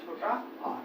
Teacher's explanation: जीवा के मध्य भाग से बोले जाएंगे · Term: मध्य स्वर